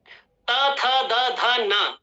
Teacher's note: आपकी जो टंग है आपके दांत के पीछे से प्रहार कर रही है, इसलिए इनको दंत्य वर्ण कहा जाता है।